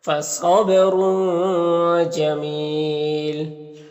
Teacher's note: صاد حروف مستعلیہ میں سے، با میں قلقلہ ہوگا، را کے اوپر دو پیش ہے تو را کو پر پڑھیں گے، اور اس تنوین کے بعد جی میں حروف اخفا میں سے تو اخفا ہوگا، اور یہاں پر وقف کریں گے تو مد عارض وقفی ہوگا، تو اس طرح سے پڑھیں گے۔